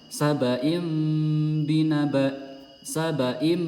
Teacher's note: ini yang mimnya merapat sempurna ya bibir kedua bibir merapat sempurna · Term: iklab